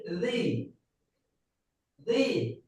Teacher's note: জিহ্বার আগা উপরের দুই দাঁতের আগার সাথে লাগিয়ে বলবেন